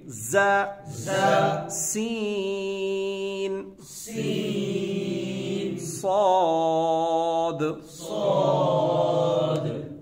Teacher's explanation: دانت بند کر کے سختی سے سیٹی جیسی آواز نکالیں گے۔ زا دونوں دانت بند ہوں گے۔